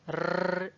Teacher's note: जब आपकी जो जीभ है वो थोड़ी इस तरह से लुढ़क रही है रर्र ऐसे करके, तो वो आपकी लुंठित ध्वनि है र · जीभ, वो ऊपर दांतों के पास, ऊपर की तरफ दांतों के पास टच कर रही है, उसे कहा जाता है वर्त्स्य भाग।